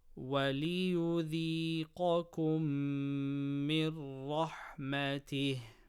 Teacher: Mim mushaddada gunna. Noon sakina before ra, idgham without gunna.